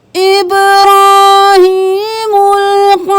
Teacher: با پہ قلقلہ، را موٹا